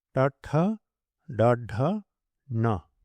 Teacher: stops formed in the hard palate. The tongue points upwards towards the brain, called cerebrum, so they're also called cerebrals. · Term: retroflex